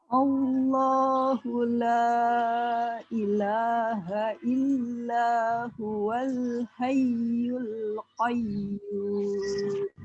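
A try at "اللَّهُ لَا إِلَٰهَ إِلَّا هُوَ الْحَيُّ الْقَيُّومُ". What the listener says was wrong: Baik, alhamdulillah. Pertahankan, Bu. Silakan, sudah bagus.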